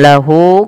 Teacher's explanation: lahu kembali lagi sama mad silah qasrah, ada ha dhamir panjangnya 2 harakat.